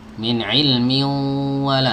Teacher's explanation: Nah, langsung masuk ke wawu, tanwinnya jadi samar, jadi sengau, masuk ke sini, masuk ke al khayshum atau ke pangkal hidung ya, min ilmin wala. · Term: idgham bi gunnah